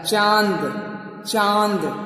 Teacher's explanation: नाक टच हो रहा हल्का सा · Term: चंद्रबिंदु